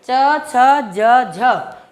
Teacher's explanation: च, छ, ज, झ जो है स्पर्श संघर्षी व्यंजन है। स्पर्श के साथ साथ कहीं ना कहीं इनमें घर्षण हो रहा है।